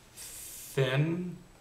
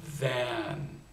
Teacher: there's a voiceless th and a voiced th